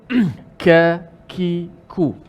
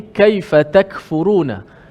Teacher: Bila sebut kaf secara fasihnya mesti ada sedikit elemen tu, hamas.